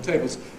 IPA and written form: ˈteɪbɫz (tables)